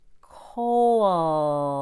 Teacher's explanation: That's the back of your tongue working really hard to make the dark L. At the same time, your throat won't be relaxed.